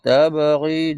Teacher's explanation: jadi qalqalah kubra dia di hujung ayat